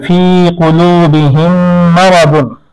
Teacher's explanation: অনুরূপ ভাবে কোরআন মাজিদে সূরা বাকারার মধ্যে ফি কুলুবিহিম মারাদুন, এখানে মিম সাকিন, মিম সাকিনের পরে মিম আসছে, তাহলে প্রথম মিমকে দ্বিতীয়টির মধ্যে ইদগাম করতে হবে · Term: ইদগামে সাফাবি